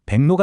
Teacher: 귀역과 리을이 만났는데 기억은 이응으로 리을은 니은으로 둘 다 변신해서 백로가 됩니다.